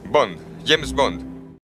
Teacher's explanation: there may be more emphasis on the second Bond than there is in English